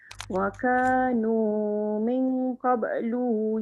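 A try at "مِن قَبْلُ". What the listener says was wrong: Lu pendek. Pendek. Min qablu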